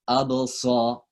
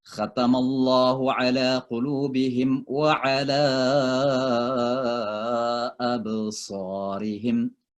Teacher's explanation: Jadi kayak sin tapi ditebalkan gitu. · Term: sad